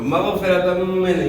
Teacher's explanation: دو زبر کی تنوین کے بعد حروف یر ملون میں سے میم ہے, تو یہاں ادغام مع غنہ ہوگا